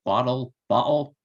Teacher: there's a sound used by just quickly closing the vocal cords and opening them it's called a glottal stop